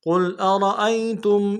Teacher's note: قاف کو موٹا کرنا ہے، لام کے ساتھ ملائیں گے، لام ساکن غنہ نہیں ہوگا